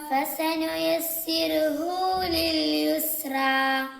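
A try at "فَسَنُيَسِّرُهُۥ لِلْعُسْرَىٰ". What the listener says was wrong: فسنيسره للعسرى ഇവിടെ ഫസനുയസ്സിറുഹു ലിൽ ഉസ്ര എന്നാണ്. ഐനാണ്, യാ അല്ല. ഫസനുയസ്സിറുഹു ലിൽ ഉസ്ര ലിൽ ഉസ്ര فسنيسره للعسرى അതേപോലെ ഫസനുയസ്സിർഹു എന്ന് പറയരുത്, യസ്സിറുഹു എന്നാണ്. സുക്കൂനല്ല, ഇവിടെ ലൊമ്മാണ്. ഫസനുയസ്സിറുഹു യസ്സിറുഹു യസ്സിർഹു എന്നല്ല യസ്സിറുഹു.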